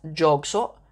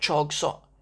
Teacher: people in the north actually pronounce j as a ch, right? So, a word like jog sot, they might say like chog sot.